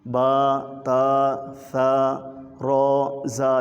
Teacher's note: جو یہ حروف ہیں لکھنے میں 2 حرفی ہیں، جیسے با اور الف ہے، اس کو صرف 1 الف کے برابر لمبا کریں گے۔ با، تا، ثا، را، زا، یہ 2 حرف ہیں، یعنی زا ہے تو زے اور الف ہے نا، 2 حرف ہو گئے۔